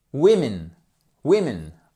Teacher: Attention, ça change la prononciation. Le O ici, c'est un I court.